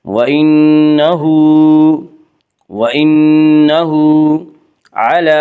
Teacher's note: وَإِنَّهُ ہا کے اوپر الٹا پیش ہے، الٹا پیش قائم مقام ہے واو مدہ کے، اس لیے الٹا پیش کو 1 الف کے برابر کھینچ کر پڑھیں گے